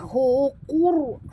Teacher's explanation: Qaf ini tebal kerana dia adalah huruf isti'la. Ra' ini pula ditebalkan kerana dia mati. Huruf sebelumnya berbaris depan. Jadi kita kena baca tebal ra' tafkhim ya.